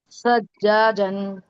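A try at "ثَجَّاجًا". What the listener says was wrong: دوسری چیز دیکھیے آپ، سا، زبان کی نوک باہر. سجاجن.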